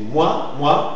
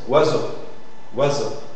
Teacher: C'est simplement la représentation de la voyelle OU qui forme une diphtongue avec une autre voyelle pour former une seule syllabe